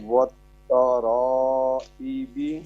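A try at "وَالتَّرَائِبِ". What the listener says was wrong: Long کرنا ہو شکریہ. اور لانگ کرو. وتا رو ای بی.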